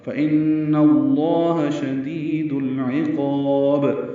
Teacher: اور با ساکن پہ قلقلہ ہوگا · عین وسط حلق سے ادا کریں گے